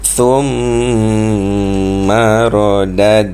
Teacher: Jangan terus kita lepas. Tahan sedikit dalam 2 harakat untuk kita hasilkan dengung pada huruf mim. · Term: wajibul gunnah